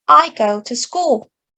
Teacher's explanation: the word to is not pronounced as clearly and as long as three other words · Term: stretched-timed language